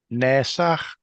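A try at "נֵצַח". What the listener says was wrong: Try to have less friction when you do the H with a dot under it. Exhale, a loud whispered H with no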